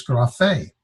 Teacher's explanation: This is gra, fe. The accent is over the last syllable, so it's grafe.